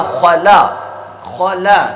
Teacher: تو خا موٹا لام باریک